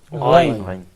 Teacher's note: This letter is pronounced like a voiced Kha. Think of the correspondence between the sounds Ka, Ga.